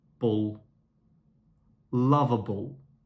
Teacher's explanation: so in this word lovable the second l is quicker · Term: destressed, de-stressed